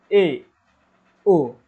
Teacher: हमारा मुंह जो होगा आधा खुलेगा और आधा क्या होगा बंद होगा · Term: अर्ध संवृत